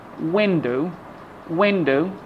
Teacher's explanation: usually we put the stress on the first syllable